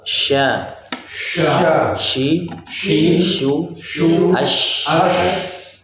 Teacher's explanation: Jadi sya itu keluar dari tengah lidah ya, berhadapan dengan langit ke atas. Dalam menyebutkan sya juga tidak boleh dengan cara membonyokkan bibir.